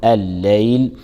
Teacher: ومن الليل، اللام في الليل لام شمسية تدغم في اللام التي تليها فتلفظ لام مشددة، فنقول الليل. الياء لينية لا مد فيها وصلا لكن نعطيها رخاوتها